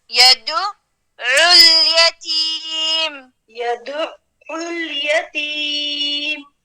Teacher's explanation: العين اور لام ساکن سے ملا کر عل